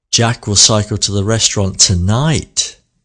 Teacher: all the words in the sentence are read very quickly apart from the key word tonight